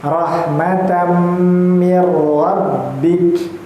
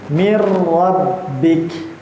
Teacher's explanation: Nah terus baru kita menemui ini idgham bi gunnah kalau tidak salah, karena tanwin bertemu huruf idgham yang dimana salah satunya huruf mim, ya. Tanwin bertemu huruf mim itu termasuk idgham bi gunnah, panjang sebanyak 2 harokat